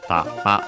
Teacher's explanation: actually accented tama on the last syllable, ta-ma, low, high